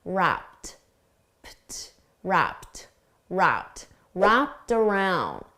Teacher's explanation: The ED is pronounced as a soft T